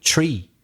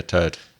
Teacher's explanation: the th is pronounced as if it were just t